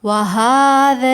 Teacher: ہا کے اوپر کھڑا زبر ہے، 2 کاؤنٹس کھینچیں